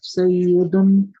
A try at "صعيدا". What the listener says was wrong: سیدن نہیں ہے، اس یا کو پڑھتے نہیں ہے، یہ مد لیٹر بن جاتا ہے. سعیدن. سعیدن. ابھی بھی آپ کہہ رہے ہیں سعیدن. کیسے بنے سعیدن؟ شد نہیں ہے، یا کے اوپر شد نہیں ہے. سائی پڑھے، سائی پڑھے، سائی دن. دن. سائی دن. اب دن. دن تھوڑا سا پنکھے کی طرح پڑھے.